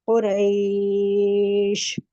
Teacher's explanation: کھینچنا ہے 1.5 تک ہی کھینچنا ہے، جلدی ادا کرنا ہے نرمی سے لین کو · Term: مد لین عارض